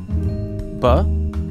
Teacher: a voiced bilabial stop